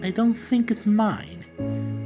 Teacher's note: What matters is that little fall and rise at the end of the sentence or inonation group in a more technical term.